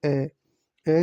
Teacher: जीभ के बीच वाले भाग में से बोला जाता है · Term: मध्य स्वर